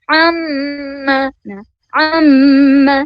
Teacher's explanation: ketika kita mengucapkan huruf mim, maka getarannya berasa ya, berasa ke hidung. Nah, itu betul-betul sudah khoisum.